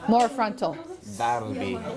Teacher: make the fatha nice and frontal so it's really clear that you're not saying dal